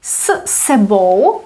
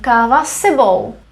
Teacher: we have two s's back to back however we only read it as one